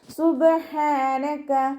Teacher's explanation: letter ആയതുകൊണ്ട് full സുക്കൂന് കൊടുക്കുക ട്ടോ സുബ് ആ സൗണ്ട് തന്നെ കൊടുക്കുക ഹന്റെ മഹ്റജ് തൊണ്ടയുടെ മധ്യഭാഗം